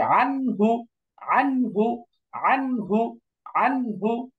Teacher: ঠিক আছে, এই যে নুন সাকিন তারপরে হামজা হা আইন হা গাইন খা, এই ছয় অক্ষরের মধ্যে হা আসছে, এই জন্য গুন্না ছাড়া স্পষ্ট করে পড়তে হবে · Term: ইজহার